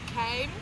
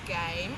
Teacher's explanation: K and g are pronounced with identical mouth position, but k pronounced without using the vocal cords and with more air release.